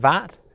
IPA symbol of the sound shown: ð